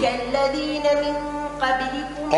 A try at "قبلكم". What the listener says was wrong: قبلكم فخم القاف. قبلكم قا.